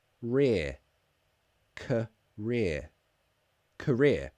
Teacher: Yes, career. It's a schwa at the beginning.